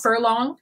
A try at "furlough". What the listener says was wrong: The pronunciation of the word is furlough, not furlong.